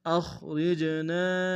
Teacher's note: ربنا اخرجنا، حمزہ کو خا کے سامنے آئیں گے، خا کو موٹا ادا کریں گے، را کو جیم کے سامنے آئیں گے، جیم حرف قلقلہ میں سے قلقلہ کریں گے، نون کے ساتھ الف مدہ کے دائیں میں کھینچیں گے۔